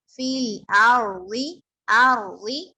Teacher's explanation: فیل عین نہیں ہونا چاہیے، حمزہ ہے تو حمزہ ہی رہے گا